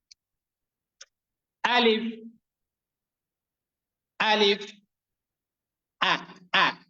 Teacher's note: আলিফ এবং হামজা এই দুইটি অক্ষর উচ্চারিত হয়ে থাকে হলকের প্রথম থেকে। হলক মানে হচ্ছে গলা, তো গলার শুরুর দিক থেকে আলিফ এবং হামজা এই দুইটি অক্ষর উচ্চারিত হয়ে থাকে।